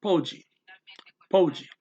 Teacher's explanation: Pode, that's P-O-D-E, so that's a vowel ending, so you gotta put the stress on the second last syllable, po, so it's pode, pode, pode.